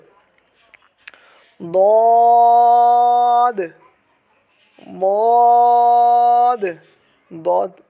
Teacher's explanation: ضاد زبان کی کروٹیں جب اوپر والے دھاروں کی جڑ سے لگتی ہیں تب ضاد ادا ہوتا ہے۔